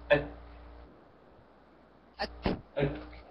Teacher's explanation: نأتي بصيغة الشدة ثم الهمس أك أك أك هكذا